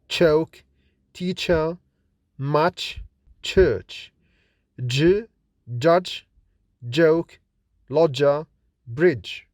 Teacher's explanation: when we produce affricative sounds we have a combination of plosive at the beginning and fricative at the end